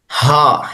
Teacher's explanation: Heavy वाला हा है, विदाउट डॉट लेटर की फैमिली से है, भारी करके पढ़ते हैं, गले के आखिरी हिस्से से पढ़ा जाता है हा।